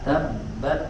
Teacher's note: Jadi tabat ya ada angin keluar sedikit, jangan tabat yada, tidak cukup sampai ditahan di makhraj tapi keluarkan angin sedikit. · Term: hams